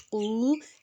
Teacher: اب قاف جو ہے موٹا حرف ہے، اس میں الٹی پیش میں لفظ کو ہم 2 حرکت لمبا کریں گے